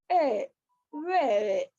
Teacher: The lips are unrounded in the beginning and neutral at the end.